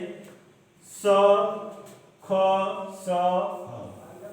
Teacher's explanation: ठीक है, जैसे स, ख, स, ह, इन वर्णों के उच्चारण में क्या होता है, हम वायु जो होती है, हमारी सांसें जो होती हैं, वो मुख में रगड़ खाते हुए बाहर आती हैं, तथा एक तरह का उसमें ऊष्मा उत्पन्न होता है, वे ऊष्म व्यंजन कहलाता है।